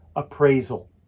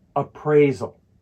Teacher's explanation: The stress falls on the second syllable, appraisal.